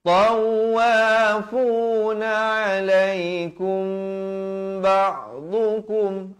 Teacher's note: ikhfa syafawi, mim mati bertemu ba, panjangkan dua harakat.